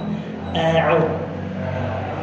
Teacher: Ain dari tengah tenggorokan